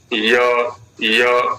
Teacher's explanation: य उधर जाएगा, उधर प्रयत्न करेगा, बहुत हल्का सा, है ना, जैसे वायु सा स्पर्श हो जाए। य बहुत हल्का सा स्पर्श है, पूरी दूरी भी नहीं है, हल्का स्पर्श है। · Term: अंतस्थ वर्ण